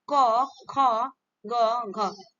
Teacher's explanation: क ख ग घ ये आपके क्या होते है कंठ से बोले जाते हैं